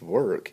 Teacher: It's kind of a schwa sound. It's not long, it's not short. It's kind of a sound of its own.